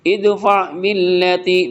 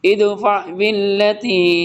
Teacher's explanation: دال ساکن اس کے اوپر قلقلہ کریں گے